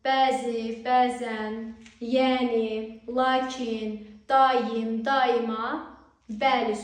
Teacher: bəzi, bəzən, yəni, lakin, daim, daima, bəli sözlərində uzanma və vurğu eyni hecadadır